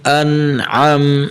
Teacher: حمزہ نون زبر ان، عین میم زبر عم، انعم. دیکھیں نا ان دونوں کی حمزہ اور عین کی آواز علیحدہ علیحدہ نکالنی ہے